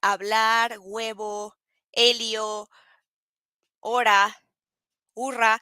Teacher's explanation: the H doesn't have a sound in Spanish. So in this case, it's hablar, huevo.